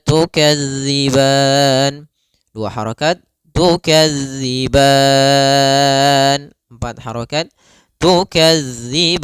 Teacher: kita boleh memanjangkan sepanjang 2 harokat atau 4 harokat ataupun 6 harokat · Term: mad arid disukun